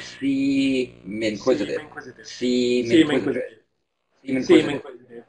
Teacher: And again, always think that you're carrying over the final consonant of the preceding word, seem, carrying that over that M and using the M to start the second word. So it's really like seem inquisitive.